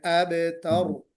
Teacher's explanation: تو کوشش کیجئے گا با میں قلقلہ ہو، لام پر لام پر قلقلہ نہ ہو، اور تا کو باریک پڑھیں، را کو موٹا پڑھیں